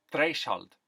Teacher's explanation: Voiceless TH becomes something closer to a T.